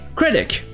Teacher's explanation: Ça se dira en anglais critic, avec la première syllabe accentuée et un C à la fin.